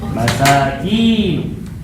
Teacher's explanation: Kalau masakin kinya pendek, ini tempat tinggal.